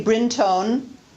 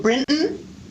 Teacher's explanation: both hillary clinton and donna brinton use syllabic n